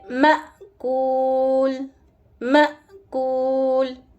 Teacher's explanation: حمزہ ہمیشہ جب ساکن ہوگا تو اس کو ہم جھٹکے سے پڑھیں گے۔ حمزہ کی آواز ووکل کورڈ سے آئے گی اور ووکل کورڈ کھل کے بند ہو جائے گا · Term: حمزہ ساکن